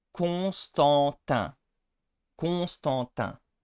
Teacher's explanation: here you have the three nasal vowels that we have in Northern French. It starts with on, so con, and then the en, stan, and lastly the un, tin.